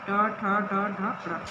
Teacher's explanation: इसका उच्चारण स्थान मूर्धा है। ऊपर वाले जो चारों दांत होते हैं हमारे, उसके पीछे वाला जो हिस्सा होता है वहाँ पे हमारी जीभ इसको स्पर्श करती है